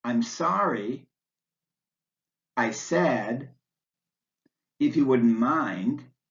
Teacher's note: The voice goes up on the last stressed word before the comma, then wavers down and up slightly to show that you haven't yet finished your thought. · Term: pause intonation